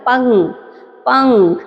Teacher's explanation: ہم نے پے کے بعد فوراً کاف کو پڑھا لیکن نون کی آواز ہماری ناک سے آئی ہے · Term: اخفا